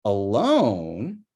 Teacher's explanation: For alone, it's low high low, with the high low going over to the alone part.